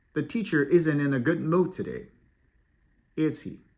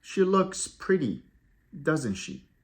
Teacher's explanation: we use a falling tone type question to ask for confirmation or agreement